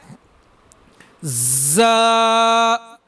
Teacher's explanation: زا جو حروف ہے سیٹی والا حروف ہے، زا کو ادا کرتے وقت معمولی سی سیٹی ہونی چاہیے۔ اگر کافی لوگ اس کو پڑھتے ہیں زا یا زے، یہ سراسر بالکل غلطی کرتے ہیں لوگ، تو ان کے اندر کوشش یہی کرنی چاہیے کہ زا کو ادا کرتے وقت سیٹی آنی چاہیے۔